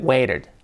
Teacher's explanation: The T with like a soft R